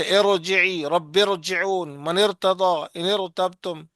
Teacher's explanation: اس را کو موٹا پڑھیں گے